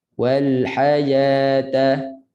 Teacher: Ha makhrajnya tengah tekak. Jangan bunyi ha. Itu bawah. Ha. Sepitkan suara di tengah tekak.